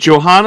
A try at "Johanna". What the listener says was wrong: Joanna. Yeah, in French we actually don't pronounce the H, but Joanna.